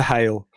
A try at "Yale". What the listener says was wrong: Oh, he said Hale instead of Yale.